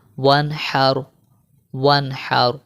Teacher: نون ساکن کے بعد جو ہے وہ حا آ گیا ہے، تو یہاں پر بھی ہم غنہ نہیں کریں گے